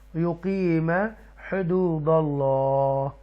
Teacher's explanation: اللہ کو تفخیم کے ساتھ پڑھیں گے، بولڈ پڑھیں گے اور فل ماؤتھ کے ساتھ پڑھیں گے، اوکے ڈیپلی پڑھیں گے۔